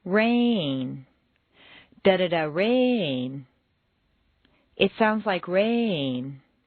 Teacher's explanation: Make rain very musical and put it on 2 notes.